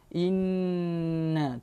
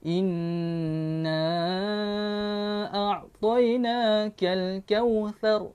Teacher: Huruf ini adalah dipanggil sebagai huruf gunnah. Bila mana kita sebut huruf nun dengan mim, dia hidung itu kena betul-betul rasa di hidung lah, betul-betul kita rasa di hidung.